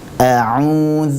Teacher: wau sukun yang sebelumnya adalah huruf yang berharakat damah dan tentu dengan memonyongkan kedua bibir kemudian suara itu murni keluar lewat rongga mulut lewat jalur mulut bukan lewat hidung